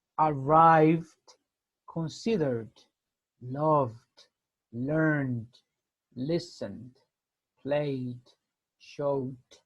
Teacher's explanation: it's much softer compared to the to the third group so the sound it's like the D but still we don't pronounce the vowel E in these cases